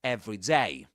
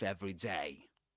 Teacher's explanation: Usually when you say every day, the stress, the word that's pronounced uh the strongest is the second one, the last one, day. Usually the stress goes on day.